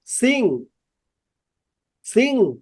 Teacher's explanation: ঠোঁট দুইটা লাগে এন একটা হচ্ছে জিহ্বাটা মারিতে লাগে মা না আর হচ্ছে কি জিহ্বাটা গলার ভিতরে লাগে সাউন্ডটা বেরোয় নাক দেয়